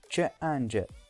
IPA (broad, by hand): ʈʃ, dʒ